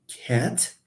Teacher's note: it is a low front unrounded vowel